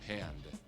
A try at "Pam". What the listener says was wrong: There's no D. It's Pam.